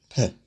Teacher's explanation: We have voiceless when the vocal cords are not vibrating, so the air passes through the open vocal cords without any vibration